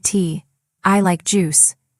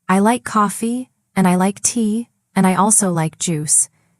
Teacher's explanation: the linking word, and makes your voice continue instead of stopping